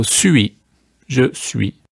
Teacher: it gets a hissing s sound at the beginning